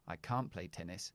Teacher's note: i don't really pronounce the n or the t it's just that long a that i use